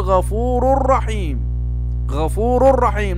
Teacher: فإذا جاء بعد التنوين أو بعد النون الساكنة راء أو لام فيكون هذا إدغام بغير غنة، ندغم ولكن لا نغن